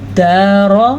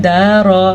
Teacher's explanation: मैंने रॉ को मोटा करके पढ़ा है और रॉ के ऊपर ज़बर को लंबा भी नहीं किया। अक्सर लोग पढ़ते हैं दार, थोड़ा सा भी लंबा किया तो उसने लफ्ज़ गलत कर दिया।